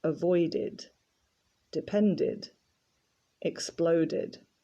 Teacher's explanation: because these verbs end with d in the infinitive the e d ending is pronounced id